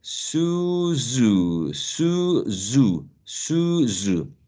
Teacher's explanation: we just add a vibration but we don't move the tongue the tongue remains in the same place so we can say Sioux zoo zoo zoo zoo zoo okay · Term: alveolar fricative